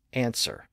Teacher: the W sound appeared at or near the beginning of the second syllable which was unstressed and in that environment the W sound was lost